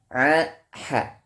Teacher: Atau di daerah yang disebut juga dengan lisan mizmar atau juga dengan katup suara. Yang mana ketika kita membaca a dan ha, lisan mizmar ini mundur ke belakang, yang mana menyempitkan ruang suara atau ruang udara sehingga terciptanya suara a dan ha, ya. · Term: ain dan ha